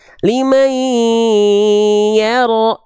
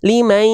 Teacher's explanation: Bunyi an-nya dimasukkan ke ai, ditahan 2 harokat, dengungkan. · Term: idgham bigunah yang naqis